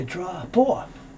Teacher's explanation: So drop off my stuff means I gotta leave this here. P moves over to the O, so you hear drop off